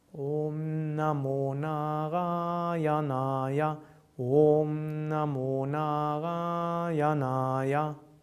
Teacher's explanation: the first A is long, Na, then long, Ra. Then the next is short, Ya.